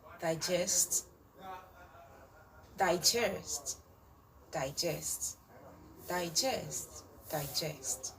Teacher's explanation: when it is a verb the stress is on the second syllable but when it is a now it is on the first